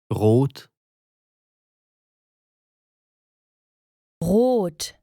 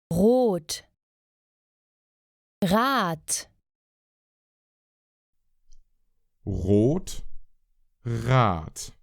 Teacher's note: the back of the throat try to bring your tongue back relax it and then Force air through they describe it as like a dry gargle